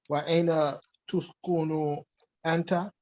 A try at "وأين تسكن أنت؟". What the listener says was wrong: تسكن with the fatha. Here. تسكن. No.